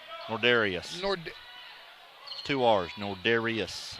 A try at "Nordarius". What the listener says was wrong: No, there's no I in there. Nordarius.